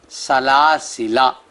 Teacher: 1، لکھنے میں سلاسلا اور پڑھنا ہے سلاسلا الف کے بغیر، جو لام کے بعد الف ہے آخر میں وہ نہیں پڑھا جائے گا